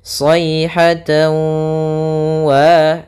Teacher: Sayhatan, tawa, di sini ada tanwin ketemu dengan huruf waw, maka kami tuliskan di sini dengan idgham bi gunnah. Cara membacanya yaitu kita masukkan huruf tanwinnya, yaitu suara tan kepada huruf waw sehingga masuk kepada huruf waw, tawa. Kemudian idgham itu memasukkan, sedangkan bi gunnah artinya disertai dengan gunnah.